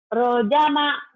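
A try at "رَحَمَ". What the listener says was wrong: Rojama kan gak ada titiknya. Rohama. Iya, rohama.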